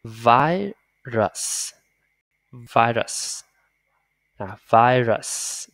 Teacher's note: Thì cái âm S thì khó này, nó xì nhẹ nhẹ nhẹ nhẹ nhẹ nhẹ nhẹ